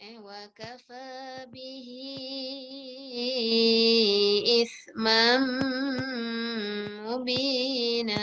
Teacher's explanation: Tanwin bertemu dengan mim. Jadi kita dengungkan, masukkan pada mim.